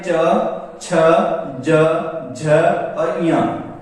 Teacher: तालु जहां जीभ है वो तालु को स्पर्श करेगी जब इन पूरे वर्ग का उच्चारण करेंगे। च वर्ग है वो पूरा तालव्य होता है।